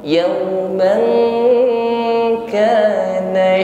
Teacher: Yauman mengucapkan fathah tanwin bertemu dengan kaf, di sini ikhfa, maka dengungkan, ya, fathah tanwin kita siap pada makhraj kaf sehingga ada bunyi eng